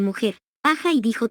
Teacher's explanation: evolucionaron hacia el fonema moderno correspondiente a J, fricativo, velar y sordo